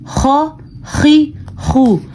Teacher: غین اور خا حلق کے شروع والے حصے سے ان کی آواز نکلتی ہے